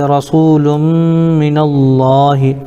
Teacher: لفظ اللہ کے لام سے پہلے نون کے اوپر زبر ہے اس لیے لفظ اللہ کے لام کو پر پڑھیں گے